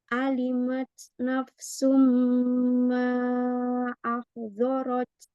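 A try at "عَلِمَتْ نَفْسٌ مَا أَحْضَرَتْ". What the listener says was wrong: Botnya jangan pakai bibir, Mi. Pakai bo, pakai sisi lidah naik ke gigi geraham. Bo, ya, bo. Lidahnya angkat. Bo, supaya dia tebal. Bo. Jangan bibirnya jangan ikut.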